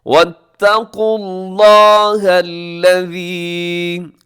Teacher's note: لفظ اللہ موٹا رکھیے گا